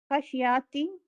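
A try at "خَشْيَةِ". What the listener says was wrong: خشیتی خشیتی یاتی نہیں، خشیتی. یتی اور یاتی میں سمجھنا تھوڑا سا اس کو بھی باقی چیزوں میں بہت اچھے ہو گئے ہیں لیکن یہ زبر پڑھنے میں کبھی کمزور ہیں. خشیاتی پڑھتے ہیں ایسا نہیں،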